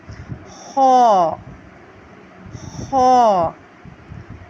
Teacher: ہونٹ کو تھوڑا سا گول کر کے، منہ کو تھوڑا سا ہم گول کر کے اور اس کی آواز نکالتے ہیں بھاری کر کے۔ ہو ہو، ہو کو ایک الف کے برابر کھینچ کے پڑھتے ہیں۔